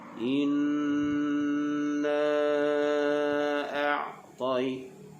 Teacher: Ain ini sebutannya adalah di bahagian tengah kerongkong. A'taina. Ain makhrajnya di tengah kerongkong.